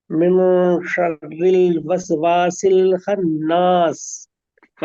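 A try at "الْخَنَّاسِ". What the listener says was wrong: खन्नास, वक्त लीजिए, गुन्ना में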